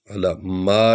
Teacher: لام کو تھوڑا لمبا کرنا ہے کیونکہ اس پر کھڑا الف ہے یا کھڑی زبر سمجھ لیں۔